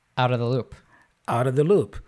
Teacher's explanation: if he said Outta the loop out of becomes outta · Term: connected speech